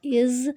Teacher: اب جو زا ہے وہ سیٹی والا حرف ہے، اس میں تھوڑی سی سیٹی آئے گی لیکن لفظ کو نہیں ہلانا۔